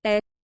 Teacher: quando alguém diz é de forma triste magoada há uma mudança para baixo na entonação